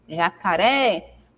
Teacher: a sílaba tônica da palavra é o ré é a última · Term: oxítona